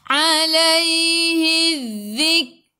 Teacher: hujung lidah keluar pada gigi depan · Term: huruf zal